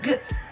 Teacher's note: Voiced velar plosive happens wherein you are going to block the airflow with the back of our tongue against the soft palate and then release it in a burst.